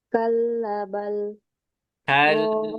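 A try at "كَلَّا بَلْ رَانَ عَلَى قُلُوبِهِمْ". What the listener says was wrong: Kalabal. Laknya panjang kan?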